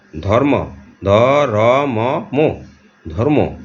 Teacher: যেমন আমরা ধর্ম এটাকে ধম্ম হিসাবে আমরা উচ্চারণ করি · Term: দ্বিত্ব